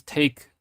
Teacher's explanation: take, I released the K at the end, so you'd have to actually add another H.